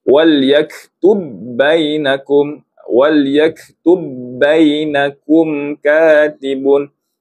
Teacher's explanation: Huruf yang pertama ba, kita masukkan ke dalam ba yang seterusnya. Jadi ba di sini tidak ada. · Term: idgham mutamatsilain